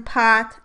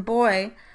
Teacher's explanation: are both bilabial stop consonants and differ only in the category of voicing. So therefore, these two phonemes are cognates.